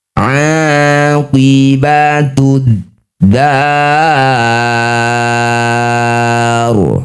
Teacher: Nah, ro yang sudah disukun jika didahului harakat fathah maka harus dibaca dengan tebal rnya ya. Angkat ujung lidah sampai menempel di langit-langit mulut. Getarkan ujung lidahnya. Pangkal lidah juga ikut naik.